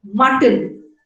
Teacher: in the second syllable, the consonant is T and N is a syllabic consonant. It acts like a nucleus and it is called a contoid.